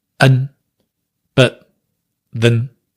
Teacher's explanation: By and large, it's the schwa sound that we're using in the weak form. Not always, but usually.